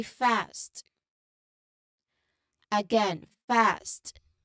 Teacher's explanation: The S sound smoothly transitions into the T sound at the very end of the word, like in fast. Okay, just like with the initial ST, the T here is unaspirated. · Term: ST cluster